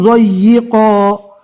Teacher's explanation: 2 زبر رکنے کی حالت میں الف مدہ بن جائے گا